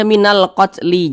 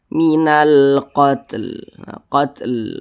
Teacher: jangan dibaca minalqatli jangan nah kita berwaakaf tepat di huruf lam huruf lam tidak dibaca panjang Makanya kita sukunkan jadi sempurnakan dulu huruf ta baru di ujungnya ada huruf lamnya